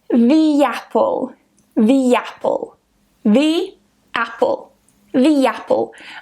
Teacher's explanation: i insert a yeah sound in there to link them together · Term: linking with yeah, linking with y